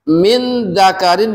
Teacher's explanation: nun mati ketemu dzal Min dzakarin dibacanya menjadi tengah-tengah